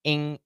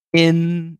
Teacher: Now, when we do in, now the tongue touches in the front. In. And then we can have a schwa, un.